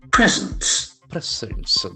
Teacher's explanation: a very interesting noun where the accent falls on the first syllable